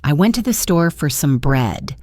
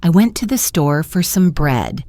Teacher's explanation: The stressed words are went, store, and bread. The other words, I to the, for, some are unstressed and spoken very quickly.